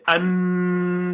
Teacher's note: For example, when you say an, so the tip of the tongue strikes the top of the mouth, roof of the mouth, and you say an. But since the 50% makhraj of noon is through the nostril, that continues to come through the nose